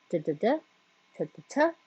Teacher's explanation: The dentals produced with your tongue, tip of your tongue against the back of your teeth.